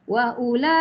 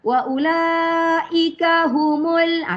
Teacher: Kita matikan ik, ada angin keluar. Ada angin keluar daripada huruf terakhir, huruf kaf ya. Huruf kaf itu mempunyai sifat hamas.